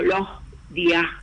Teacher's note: Por ejemplo, si yo tengo que decir los días de tal cosa, se escucha algo así como los días, o sea, con esa S aspirada. Y se debe a que está en posición implosiva